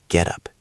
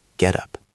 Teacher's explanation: In American English, the T in get often sounds like a soft D.